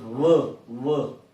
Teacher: Lower lip with upper teeth. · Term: labiodental